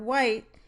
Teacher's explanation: The voiced labial-velar glide, the first sound in the word white, is articulated with a constriction at the lips as well as a constriction between the back of the tongue body and the velum. Therefore, we say that the w consonant is doubly articulated.